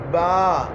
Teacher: کہاں سے ادا ہو رہا ہے؟ ہونٹوں سے، دونوں ہونٹوں سے، دونوں ہونٹ ملے آپس میں تو با ادا ہوا